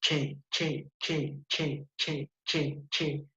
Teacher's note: es sorda porque no vibra